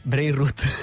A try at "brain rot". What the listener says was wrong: No, perché ha una O sola, vuol dire ti marcisce il cervello, giusto?